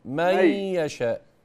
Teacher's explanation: ما تنطقش النون كده خطأ. قولها مي. مي يشاء. مي يشاء بس زودها شوية.